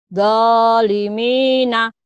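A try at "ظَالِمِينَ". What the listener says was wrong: Za, agak rapuh dikit. Zalimina. Zalimina.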